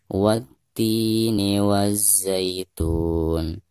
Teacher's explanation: Adapun pembacaan 'ti' di sini, dianggap mad thabi'i dan dibaca dua harakat karena ada vokal kasrah pada ta, atau 'ti' di sini, diikuti oleh ya sukun. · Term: mad tabi'i